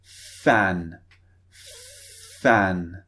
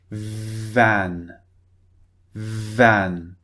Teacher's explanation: so f is unvoiced v is voiced they both use the same part of the mouth